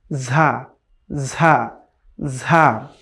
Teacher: এটিও একটু শক্ত উচ্চারণ হবে, এবং জিহ্বা এবং দাঁতের যেই মাঝখানের জায়গাটুকু আছে সেখান থেকে একটু বাতাস বের হবে